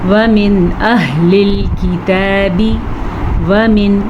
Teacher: نون ساکن کو ہم ظاہر کر کے پڑھیں گے بغیر غننے کے پڑھیں گے